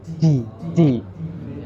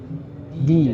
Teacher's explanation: Tidak boleh terlalu menghembus nafasnya.